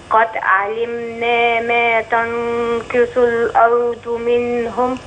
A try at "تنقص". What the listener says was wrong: برضو تشكيل نصلحه تنقص طب اسمعي مني ثاني كده تنقص الأرض منهم